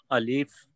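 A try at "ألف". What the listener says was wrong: Brother Alif, be careful. There is no ya between lam and fa. Say alif.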